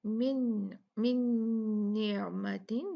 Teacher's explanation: तो यहाँ पर ये देखें मिन मिन निअमतिन ये जो है ये यहाँ पर इदगाम है नून साकिना का। तो यहाँ पर हम इदगाम करके पढ़ेंगे, दो काउंट गुन्ना करके पढ़ेंगे।